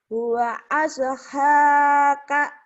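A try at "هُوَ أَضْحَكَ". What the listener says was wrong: Pendek. Huwa adhaka. Pendek. Huwa adhaka. Nggak ada yang panjang.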